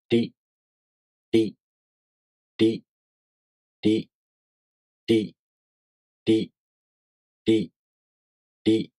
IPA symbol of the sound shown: ɾʲi